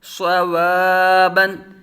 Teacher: صاد پر مستعلی متحرک بغیر کھینچے بغیر جھٹکا دیے